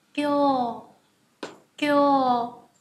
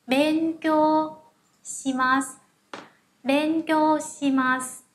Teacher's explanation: Kyo, chúng ta có âm ghép ki và yo, sau đó là trường âm u